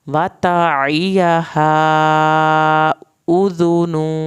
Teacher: वतइयहा उज़ुनु, यहाँ पर आइन को हल्क से पढ़ना है, हा को हमने लंबा किया है, छोटी मद भी है और अलिफ भी है। उज़ुनु पे 1 अलिफ के बराबर देर लगाई।